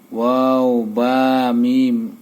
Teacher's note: দুই ঠোঁট হইতে বা মিম উচ্চারিত হয়